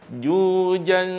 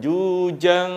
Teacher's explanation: di tempat makhrajnya huruf jim, yaitu di tengah, bukan jujang. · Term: ikhfa'nya